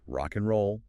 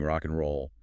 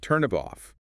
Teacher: The final consonant of one word links directly onto the initial vowel of the next. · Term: linking